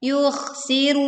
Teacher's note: huruf kh dibaca dengan suara yang tebal